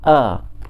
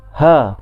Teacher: tenggorok yang bawah ni berkongsi 2 huruf yang keluar dari makhraj hurufnya, iaitu hamzah dan ha.